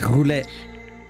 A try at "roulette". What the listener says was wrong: It's roulette. Russian roulette. Roulette. We don't say the L. We don't say the L. We don't pronounce the L. No, that you said the L. Roulette. Roulette. Roulette.